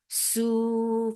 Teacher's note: Su for dhamma, circular lips, make it 2 counts long.